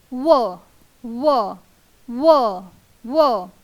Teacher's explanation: दात आणि ओठ साहाय्याने त्याचा उच्चार होतो · स्वर एकही नाही आहे, फक्त आहे व्यंजन, तो म्हणजे व. आपण उच्चार करून पाहू शकता तेव्हा आपल्याला जाणवेल दात आणि ओठांच्या साहाय्याने त्याचा उच्चार होतो. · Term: दंतोष्ठ्य